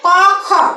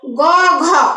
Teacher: গ ঘ স্বরতন্ত্রী অনুরণিত হয় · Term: ঘোষ